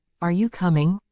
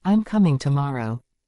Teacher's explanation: feel how the intonation rises in the question and falls in the statement